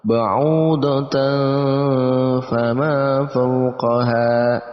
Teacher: Ba'udatan fama, ya, itu juga ikhfa seperti pembahasan di atas, maka kita samarkan bacaan tanwinnya dan kita tambahkan ang